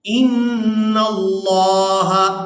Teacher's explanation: نون مشدد پر غنہ کریں گے اور اس کے بعد لفظ اللہ کے لام کو پورا ادا کریں گے